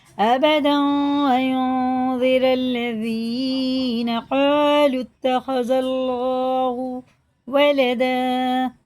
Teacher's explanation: بڑا قاف ہے، الف سے پہلے زبر ہے، یہ الف مدہ ہے، کھڑے زبر کی طرح کھینچ کے پڑھیں گے